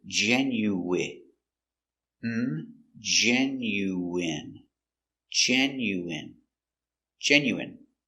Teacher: first syllable stress genuine